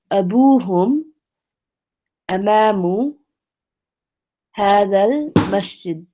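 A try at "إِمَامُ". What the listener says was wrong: Okay, it doesn't say amama. It says imamu.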